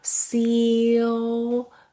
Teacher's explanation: 이 I가 같이 E 길게 해요. ceiling. 두 번째 E는 짧게 내주세요.